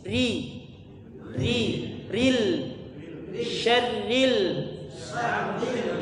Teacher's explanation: ro tasdid kemudian harakatnya setelahnya kasrah tipis